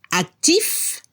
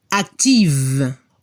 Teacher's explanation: La F se transforma en VE al femenino. La pronunciación para el masculino se debe escuchar la F al final, actif, y al femenino se escucha el sonido V, como una abeja.